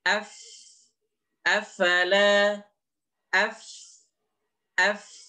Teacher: Di mana ujung gigi kita ini, kita tempelkan pada perut bibir. perut bibir itu adalah cekungan di bibir kita. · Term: huruf fa